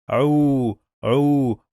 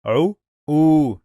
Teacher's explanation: When we have long vowel wow, we must connect it to the previous letter and we merge both of them in the same syllable. We pronounce both of them together.